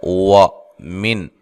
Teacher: واو کو ادا کرتے ہوئے ہونٹوں کو گول کرنا ہے۔ وَمِن، نون ساکن کو ہلانا نہیں ہے، اور یہاں نون ساکن کا اظہار ہے، غنہ نہیں کریں گے۔